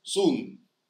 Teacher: And so the back vowel, the backness of the vowel is almost instantaneous, yeah? So you could see a transition, but it's much more rapid. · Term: Polish accent